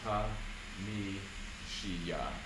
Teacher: that's an example of rightward resyllabification of the M